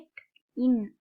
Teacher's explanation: நாவின் நுனி அன்னத்தின் நுனியை பொருந்துவதால் பிறக்கும் எழுத்துக்கள்